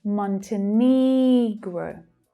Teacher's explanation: The third syllable there is stressed.